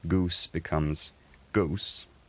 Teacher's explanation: the goose vowel diphthongizes again as it actually has in some dialects